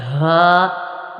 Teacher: ہا جو ہے حلق کے نیچے والے حصے سے ادا ہوتا ہے۔ حمزہ، حمزہ، حمزہ اور ہا ان دونوں کا مخرج ایک ہے یعنی حلق کا نیچے والا حصہ۔